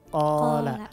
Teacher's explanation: ketika huruf qaf ini kita lafalkan, maka pangkal lidah kita naik